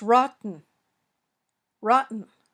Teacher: it was the glottal stop. It's between a stressed vowel and the syllable un.